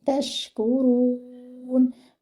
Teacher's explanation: Your ra should be heavy and your noon at the end should be given moderate timing.